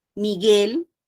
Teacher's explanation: no tiene diptongo porque yo no escucho la u